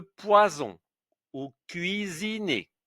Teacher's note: avec le S entre deux voyelles, c'est le son Z